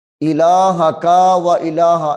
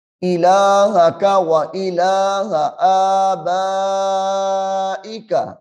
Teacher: اس کاف کو بھی لمبا نہیں کرنا اور اس ہا کو بھی لمبا نہیں کرنا